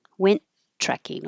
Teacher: Went trekking, only one T sound. Just hold the first one and release the airflow on trekking.